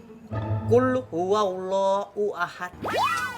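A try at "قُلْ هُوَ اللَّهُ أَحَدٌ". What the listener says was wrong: Itu juga H-nya H besar. Qul huwallahu ahad.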